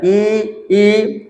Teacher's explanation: छोटी ई और बड़ी ई ये तालु से होता है, ई ये तालु हो रहा है।